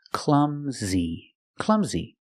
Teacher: the last sound is a long e like green beans clumsy clumsy the stress is on the first syllable clumsy he's · The S makes a Z sound like zebra, clumsy. And the last sound is a long E like green beans, clumsy.